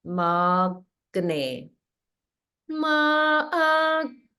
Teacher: So there's holding after the ma. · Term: holding after dirgha